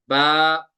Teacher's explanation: तो बा को कितना खींचेंगे, एक अलिफ खींचेंगे बा को